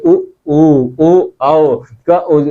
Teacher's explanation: जब बोलेंगे आप तो ओठ आपका गोला हो जाएगा